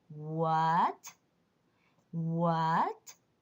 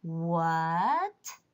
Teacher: is a rising tone. It sounds like the English question, what? What? Can you sense the change of the pitch? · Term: second tone